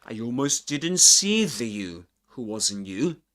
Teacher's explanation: he drops the t sound, the t in the word didn't. He doesn't say didn't, but didn't.